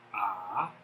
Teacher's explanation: The second tone, which is rising